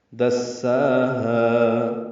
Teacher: سے آنے کی وجہ سے دال کو سین سے ملانا ہے، سا اور ہا برابر لمبے کرنے ہیں، دو حرکات